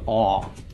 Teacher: in Ashkenazic the Comets can be pronounced as a short O or almost it's almost an AW sound